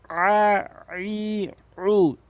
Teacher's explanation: আইনের উচ্চারণ জবরের বাম পাশে খালি আলিফ থাকায় এক আলিফ টেনে পড়তে হবে এবং আইনের উচ্চারণটি হলকের মাঝখান থেকে চাপ দিয়ে উচ্চারণ করতে হবে